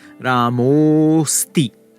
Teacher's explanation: Finally, when you get aha before it's similar to what we saw with our voiced consonants. The aha is going to turn into an o, but then our that had started the second word, the V2, that gets dropped and it gets replaced by our S-shaped avagraha we had encountered earlier, if you remember, with our vowel sandhi, with our ekara.